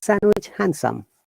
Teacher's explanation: in both words d is silent